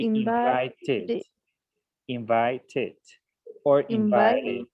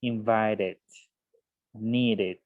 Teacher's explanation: Entonces la regla nos dice, bueno, ojo, cuando usted tenga un verbo terminando en un sonido d o en un sonido t, lo que va a hacer es pronunciar el ed como si fuera un id